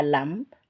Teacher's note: Jadi kalau kita letakkan seperti ini tangan kita di depan lisan kita ya, seperti yang saya contohkan ini, kita letakkan begini, kita menyebut melafalkan huruf hijaiyah lam, lam itu tidak ada napasnya, tidak ada udara yang keluar. Sehingga pelafalan kita untuk sifat jaharnya insya Allah sudah benar.